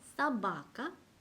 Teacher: 강세가 없는 O에서는 아 발음이 나고요. 강세가 있을 때는 O 발음이 나요.